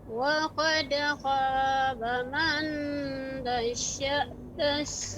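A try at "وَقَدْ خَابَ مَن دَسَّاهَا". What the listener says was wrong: Masih terasa Ibu? Man, coba bedakan antara man itu lidahnya nempel ke langit-langit. Adapun yang benar, lidahnya itu tidak nempel di langit-langit. Ya, sedikit dikebawahkan. Artinya dibuka ya. Dassaha. Akan berbeda jika kita tempelkan ke langit.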